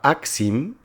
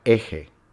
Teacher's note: la A se cerró, se inflexionó para dar la vocal E